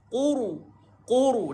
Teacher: Dan ra sukun, tebal ra ini sebab huruf sebelumnya bari di depan. Quru. Dan ada sifat getar pada ra.